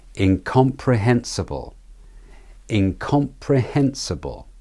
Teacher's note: The stressed syllables are in, com, pre, and hen. The hen being the main stressed syllable. The s and bull are the weak syllables.